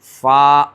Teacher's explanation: خشکی کا حصہ یہ باہر کا ہے جو خشک یعنی کہ سوکھا ہوا، اور یہ جو اندر والا حصہ ہے وہ ہے تری والا حصہ. تو اوپر کے بڑے دانتوں کا کنارہ نیچے کے ہونٹ کی تری والے حصے سے یعنی کہ ایسے فا ادا ہوتا ہے.